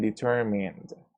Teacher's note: In this case, it's D because we have the N sound, and the N sound is voiced, which means that it vibrates